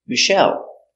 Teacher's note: Accent on the second syllable.